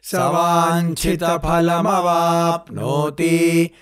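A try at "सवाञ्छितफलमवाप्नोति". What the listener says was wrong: అక్కడ కూడా వాంఛిత ఫలమవాప్నోతి దగ్గర తీకి దీర్ఘం లేదు. అక్కడ తీకి మళ్ళీ ఇది గుర్తుపెట్టుకోవాలి, మాత్ర తీ కాదు, అది తీ.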